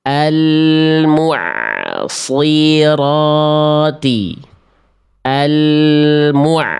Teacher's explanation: jelas shadnya tebal tidak berubah menjadi huruf yang lain